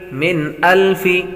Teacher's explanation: نون ساکن کے بعد حمزہ حروف حلقی میں سے آ رہا ہے، غنہ نہیں کریں گے